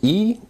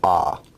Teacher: E is an example of a high vowel, and ah is an example of a low vowel.